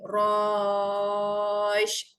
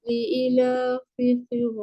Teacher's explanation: Matikan harakat terakhir huruf shin. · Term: maklin